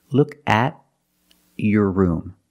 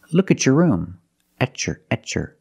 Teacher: When you have a T before a Y in two separate words, and you link the pronunciation of the two words, you will hear the ch sound.